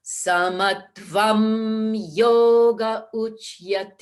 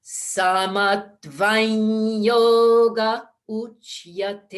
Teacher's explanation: But if you really want it to blend, we really should have that sandhi there. So the of vam changes to the nya, that second mouth position, so that it blends right into the ya of yoga. So it's samatvam yoga uchyate.